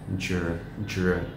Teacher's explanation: Nếu mọi người biết một chút về phát âm tiếng Anh ấy, thì cái dr nghe giống như âm j với cả âm r đi với nhau.